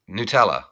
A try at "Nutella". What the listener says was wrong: No, it's Nutella. Nutella.